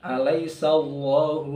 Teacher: Allah lafzul jalalah dibaca dengan tebal tafkhim